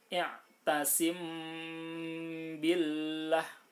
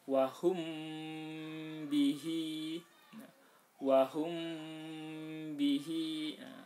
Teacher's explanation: Jadi mem sukun bertemu dengan ba, maka dibaca samar dan sekaligus didengungkan. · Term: ifa syafawi